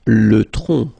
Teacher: final C is not pronounced here